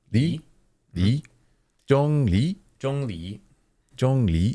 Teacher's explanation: rising tone, is sort of like you're asking a question